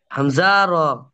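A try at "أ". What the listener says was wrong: হামজা কোথায়? র? র নয়, দেখে বলেন, আপনি একটু বড় করে নেন স্ক্রিনটা, আপনি একটু ছবিটা বড় করে নেন।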